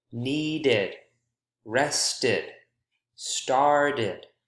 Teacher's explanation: Notice there are 2 syllables in each of these. Notice how the ED is its own syllable.